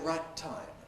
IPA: ˈraɪt̚ ˈtaɪm